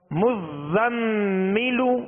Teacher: میم مشدد ہے تو کیا کریں گے؟ غنہ کریں گے، مزمل، زا کو سختی میں پڑھیں گے، سیٹی کی آواز پیدا ہوگی